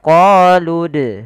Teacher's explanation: apabila ada huruf dal berharakat sukun, maka ia kita baca dengan bacaan qalqalah. Harus memantul. Qalqalah artinya memantul.